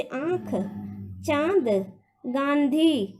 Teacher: अनुनासिक यानी चंद्रबिंदु होता है, जिसका उच्चारण जो है नाक से, यानी हमारी जो प्राणवायु होती है नाक से भी निकलती है और गले से भी, यानी कंठ से भी निकलती है। तब चंद्रबिंदु का जो है ध्वनि आती है, जैसे आँख, चांद, गांधी आदि।